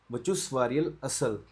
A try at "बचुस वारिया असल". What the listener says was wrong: वारियल क्या होता है?